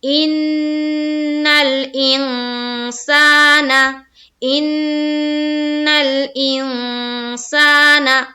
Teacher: فی الحال آپ یہ سمجھیے کہ یہاں پر نون کا جو اخفا کریں گے یہاں پر، تو یہاں پر ہم لوگ ناک میں تھوڑی دیر آواز کو چھپائیں گے۔ تو ہم کریں گے ان الانسان، ان الانسان۔